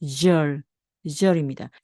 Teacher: 입술이 앞으로 쑥 나오면서 목이 울리는 절, 절입니다.